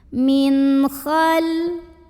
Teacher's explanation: Berikutnya di sini ada hukum izhar halqi karena ada nun sukun yang di hadapannya huruf halqi atau huruf tenggorokan yaitu kha. Maka cara bacanya nun ini dibaca dengan jelas bunyi n-nya ya dan tidak perlu kita tahan.